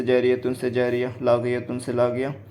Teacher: گولتا پر وقف کرنا ہو تو ہائے ساکنہ بن جاتی ہے